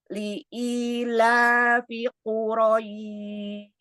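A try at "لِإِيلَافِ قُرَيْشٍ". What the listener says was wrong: Iya, bagus. Masya Allah, tabarakallah, alhamdulillah. Mantap.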